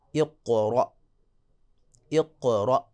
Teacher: آخر میں حمزہ ہے تو وہاں آواز اچانک رکے گی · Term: شدت